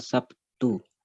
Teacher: Bunyi B menjadi P akibat pengaruh dari bunyi T. Bunyi B adalah bunyi hambat bersuara dan bunyi T adalah bunyi hambat tak bersuara. Oleh karena itu, bunyi B yang bersuara terpengaruh oleh bunyi D yang tidak bersuara menjadi bunyi B yang juga tidak bersuara. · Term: Asimilasi